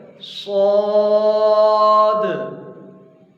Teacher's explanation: جب ہم صاد کو پڑھیں گے تو اس کے ساؤنڈ کو تھوڑا سا بھاری کر کے پڑھیں گے، موٹا کر کے پڑھیں گے